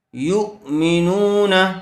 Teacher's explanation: یو مینو، نون زبر نہ، یو مینون، نون کے اوپر زبر ہے اس لیے نون کو جلدی پڑھیں گے، کھینچیں گے نہیں۔